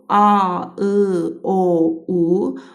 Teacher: Bu saitləri səsləndirərkən dilimiz geriyə getdi. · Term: qalın saitlərimiz